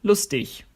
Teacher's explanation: In some areas of the German-speaking world, you'll hear a G pronounced as a ch, when it's on the end of a word.